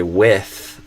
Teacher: make sure you're saying with your tongue touching and not your lower lip. Because if you do lower lip, you're saying with, which is a different word, like to catch a whiff of something, a smell, or to whiff when you swing a baseball bat and you miss.